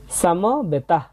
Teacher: এখানে শেষের দিকে শুধু মুখ দিয়ে একটু হাওয়ার মতো বের হবে